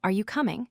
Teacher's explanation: The pitch starts low and gradually goes higher. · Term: gradual rise